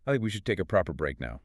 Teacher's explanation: the stress hits think and break and the words take a proper break.